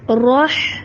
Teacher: ہا کو را سے ملائیں گے، را کے اوپر ہے زبر تو را کو موٹا کریں گے اور آگے ہا سے ملائیں گے